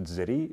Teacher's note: le z consonne constrictive sonore influence l'occlusive sourde de et la transforme en occlusive sonore de. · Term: voisement